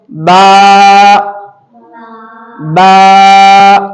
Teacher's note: हम थोड़ा इसको खींच रहे हैं क्योंकि इसके अंदर अलिफ मौजूद है इस वजह से इसको खींच के पढ़ रहे हैं तो [संगीत]